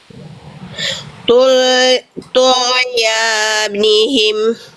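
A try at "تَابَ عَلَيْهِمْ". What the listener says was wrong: Oke, udah bagus, sip.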